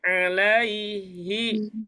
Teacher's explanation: Alaihi tidak boleh dipanjangkan karena itu adalah huruf lin.